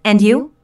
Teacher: Notice the rising intonation on and you?